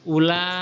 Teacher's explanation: Yang pertama mat wajib muttasil, yaitu panjangnya 6 harokat atau 3 alif.